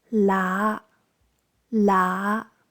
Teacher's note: tone five rising towards mid-tone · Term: Tone 5